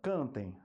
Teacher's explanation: Quando o som passa pela boca e pelo nariz, aí eu tenho um ditongo nasal